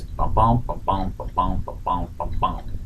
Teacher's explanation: Iambic pentameter is 10 syllables per line, an unstressed syllable followed by a stressed syllable